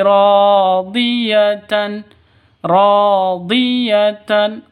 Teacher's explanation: ro panjang dua ketukan Kenapa karena ada Alif diawali dengan fat fathah sebelum Alif itu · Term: mad asli